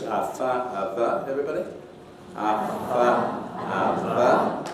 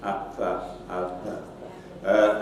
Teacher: they're made with true labiodental, so lip and teeth for contact. So they're not bilabial, a, fa, a, va.